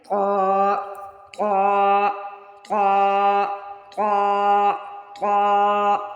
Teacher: زبان کی نوک جب اوپر والے دو دانتوں کے سروں سے لگے تو طا ادا ہوتا ہے، اس کو موٹا تو ادا کرتے ہیں